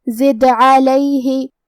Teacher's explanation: قلقلہ کا معنی ہے حرف ساکن کو ہلانا، لہذا ہم حرف الدال کو ہلاتے ہوئے یہ کلمہ کو پڑھیں گے